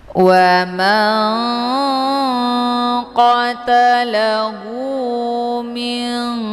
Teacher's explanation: nunnya disamarkan kemudian siap-siap menuju ke huruf Kaf · Nun posisinya di ujung lidah sementara Kaf posisinya di Pangkal lidah agak sedikit ke bawah daripada huruf q cara bacanya nunnya disamarkan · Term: Ikfa, Ikfa abad